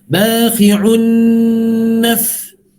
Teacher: sebab nun itu nipis, maka kita kena senyum.